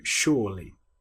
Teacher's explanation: Now the S-U here, you'll notice there's no H, but we're making the sh sound with the word sure.